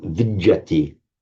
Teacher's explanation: The d becomes a double j